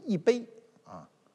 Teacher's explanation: 如果是阴平、阳平、赏声，或者说他后面这个字是一声、二声、三声的时候，他自个儿就读四声了